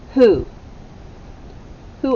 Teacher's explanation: the w is silent the w h sounds like h and the o sounds like ooh double o who the u sound as in school all right